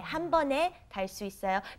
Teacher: Okay, 한 번 is one time 에, 한 번에. And you pronounce it 네, not 에, because of the 받침, the second consonant under 한 번